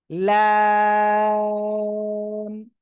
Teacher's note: জিহ্বার আগার কিনারা, উপরে মাড়ির দাঁত, এই যে এই, ঠিক আছে, দুই পাশের যে কোনো পাশে লাগালে হবে। জিহ্বার আগার কিনারা উপরে মাড়ির দাঁতের গোড়ার সঙ্গে লাগিয়ে আপনি উচ্চারণ করবেন, চার আলিফ টান হবে।